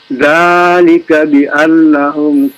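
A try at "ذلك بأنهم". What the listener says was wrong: Bi annahum tasydid.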